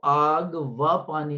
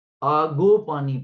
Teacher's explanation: آگ واو کے بعد پانی، تو ہم اس کو آگ و پانی نہیں پڑھیں گے، آگو پانی پڑھیں گے